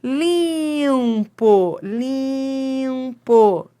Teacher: É o lim que manda na palavra